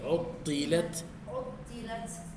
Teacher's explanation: بس التاء فيها همسه